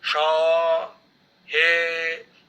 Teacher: extended ones like Sha, He, this will occupy 2 units of time